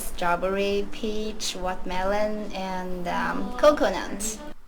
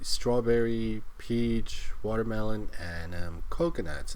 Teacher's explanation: and then her voice goes up. I don't know why it goes up on coconuts.